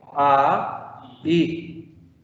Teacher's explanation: De esa manera yo sé que el diptongo se rompió. No puedo leer ay, tengo que leer a, i. Es una ruptura. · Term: diéresis